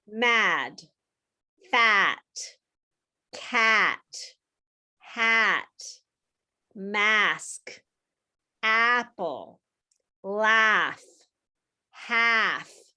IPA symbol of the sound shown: a